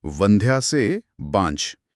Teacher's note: एक तो व का ब में बदलना